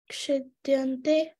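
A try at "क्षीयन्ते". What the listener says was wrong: No, there is no D. Kshiyante.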